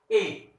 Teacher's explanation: ए कंठ तालव्य अर्थात कंठ और तालु के सहायता से ए शब्दों का उच्चारण किया जाता है